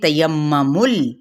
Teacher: میم پہ غنہ کرنا ہے اور میم کی پیش کو لام کے ساتھ ملائیں گے.